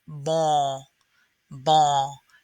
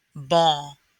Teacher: to come at more of a 45 degree angle ball and the end will not be the result of your tongue touching the top of your mouth it will actually be the result of being shoved back in the nasal cavity